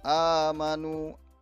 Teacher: Kemudian yang berikutnya adalah mad badal ya, huruf alif bertanda baca fathah berdiri, ini mad badal berdiri. Amanu panjang 2 harakat